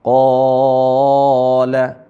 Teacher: disebabkan berada huruf q ini berada sebelum huruf alif ya jadi setelah huruf q ada Alif dan dia berada sebelum huruf alif maka dia dibaca panjang